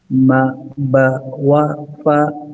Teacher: ما با وا فا are from the lips.